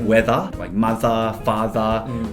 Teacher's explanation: we pronounce that er at the end of words as more of an a sound like weather like mother father we don't roll those rs as strong as americans do